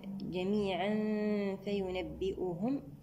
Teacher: التنوين مع الفاء، هنا إخفاء حقيقي في غنة مرققة المرتبة الوسطى